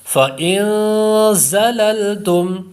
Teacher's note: اس میں زا جو ہے حروف صفیریہ میں سے ہے، اس لیے زا پر سیٹی کی آواز پیدا ہوگی